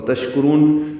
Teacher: تشکرون شین ساکن میں تفشی اور ہمس ہے، تشکرون کاف باریک ہے، را کو پر پڑھیں گے اور لمبا کریں گے، تشکرون یہ مد عارض للسکون ہے۔